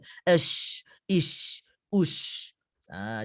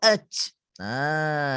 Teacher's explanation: Huruf shin adalah huruf tafashi, berhamburan sifatnya.